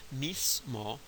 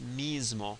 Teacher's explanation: pronounced by some speakers in some circumstances as mismo with the voiceless fricative, and by other speakers in other circumstances as mismo with a voiced fricative. Same word, no difference in meaning.